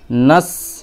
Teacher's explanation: ঠিক আছে, এই সিনটা মানে জিহ্বার আগা, নিচের সামনের দাঁতের আগার সাথে, ঠিক আছে, নিচের সামনের দাঁতের আগা। সিন মানে সিটি যেরকম হয় আওয়াজ, ওই রকম একটা আওয়াজ বের হবে। নাস, নুন সিন যাবার নাস, জিহ্বার আগা, হ্যাঁ নিচের সামনের দাঁতের আগাতে লাগিয়ে বা আগার একটু নিচে লাগিয়ে নাস, নুন সিন যাবার নাস, আইন খাড়া যাবার আ, নাস আ, নাস আ।